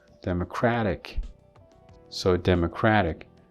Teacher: So here the stress is on crat